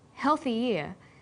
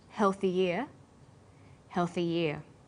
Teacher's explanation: When healthy is linked together with ear, a y sound is added. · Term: y linking sound